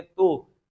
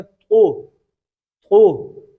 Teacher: تا کے اوپر پیش ہے تو اس کو ہم نرمی کے ساتھ پڑھیں گے اور باریک پڑھیں گے